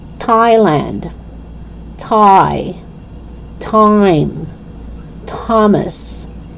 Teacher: You don't pronounce the H. You don't pronounce it as th or the. Instead, you only pronounce it with T. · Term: the sound of T